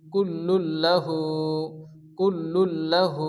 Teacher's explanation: লাম আসে তাহলে তানবিন এবং সঙ্গে লামকে মিলিয়ে তাড়াতাড়ি করে পড়তে হবে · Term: ইদগামে লাম